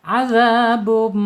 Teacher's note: Idgham biguna ditahan 2 harokat. Azabum, tahan dulu, jangan buru-buru.